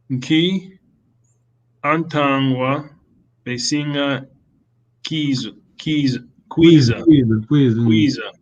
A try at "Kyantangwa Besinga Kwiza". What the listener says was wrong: Here we have we can do the vowel contraction. Make it one word. Kyantangwa. Besinga Kwiza. Remember long vowel? Besinga Kwiza. Kyantangwa Besinga Kwiza, please.